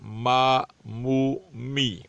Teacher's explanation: میم کی ادائیگی میں اس بات کا خیال رکھا جائے کہ غنہ ہونا نہ پائے۔ ما مو می، بغیر غننے کے اس کو ادا کیا جائے گا۔